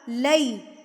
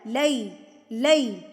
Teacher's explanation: لے غلط ہے، لے اے اور اے نہیں آئے گا، ای آئے گا